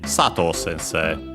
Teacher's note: While for Sato, which is accented on sa, on the first syllable, then it's simply Sato sensei. So, first on the sa it's high, everything else is low